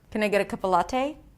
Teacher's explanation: an example where I use reductions, held sounds, and the flap t